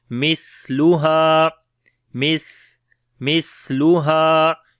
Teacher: سا کے اوپر بھی صفت ہمس ہوگی اور نرم پڑھیں گے، اس کو ہا کو لمبا کریں گے، الف مدہ ہے.